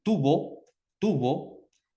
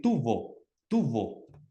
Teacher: pronunciar tubo con los dos labios que se juntan y pronunciar tubo, tubo con los dientes de arriba y los labios de abajo